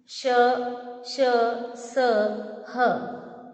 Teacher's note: ऊष्म व्यंजन का उच्चारण करते समय हवा मुख में रगड़ खाकर निकलती है